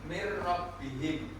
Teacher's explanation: Jadi mim nun sukun bertemu dengan ro maka dia disebut dengan baca idgam bila di sini contohnya mirihim nun sukun bertemu dengan ro dan membacanya tidak boleh mendengung. Kalau tadi di igam digunah itu mendengung maka diqam bila gunah ini dia membacanya tanpa mendengung. · Jadi idgham bilaguna berarti melebur bunyi nun sukun atau tanwin ke huruf setelahnya tanpa menimbulkan dengung, atau suaranya terdengar jelas dan tegas tanpa getaran samar di hidung seperti pada bacaan biguna. Hukum bacaan ini berlaku ketika nun sukun atau tanwin bertemu dengan dua huruf tertentu, yaitu lam dan ro.